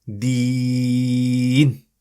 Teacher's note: And notice, how did I say it? Deen. I stretched it. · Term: Long stretch